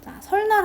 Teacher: 앞에 있는 리을 때문에 뒤에 있던 니은이 바뀐 거잖아요